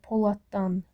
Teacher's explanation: Poladdan olur, poladdan şəklində. Yəni, buradakı d t kimi tələffüz olunub, öz qarşılığına, kar qarşılığına keçib